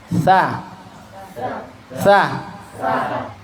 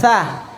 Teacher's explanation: kalau istifal, pangkal lidah atau lidah itu hanya menjulur ke bawah, tidak naik ke atas.